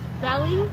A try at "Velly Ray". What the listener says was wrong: Belly. With a V. V. VELLY.